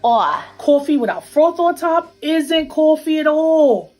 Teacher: One feature common in New York City is what we call a raised vowel in words like thought and cloth. It sounds something like aw.